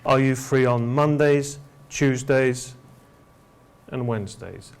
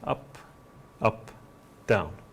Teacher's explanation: at the end of these kind of uh phrases or questions we go down at the end but before we go down we go up for example are you free on Mondays Tuesdays and Wednesdays up